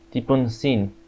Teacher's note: When 2 alveolars encounter, like N and S, there can be an epenthesis of T, like in Tipunsin, because it is hard to make this cluster smoothly.